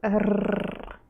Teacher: Russian R is a frontal sound